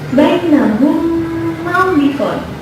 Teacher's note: ada huruf mim sukun bertemu mim, sehingga bacaannya digabung dan menghasilkan bacaan dengung · Hukumnya yang lain idgham mim, yaitu setiap mim sukun bertemu mim. Cara membacanya dengan memasukkan ke dalam huruf setelahnya sehingga berharakat seperti tasydid. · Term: idgham mithlai